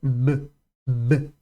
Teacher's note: já sai vibrando corda vocal